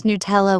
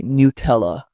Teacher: Some pronounce Nutella with stress on the first syllable